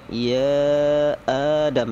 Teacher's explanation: Wa qulna, na panjang. Ya Adam, ya-nya itu panjang 6 harokat karena mad jaiz